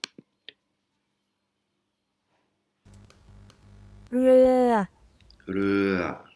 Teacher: elle a un petit peu fait rouler le R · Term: R roulé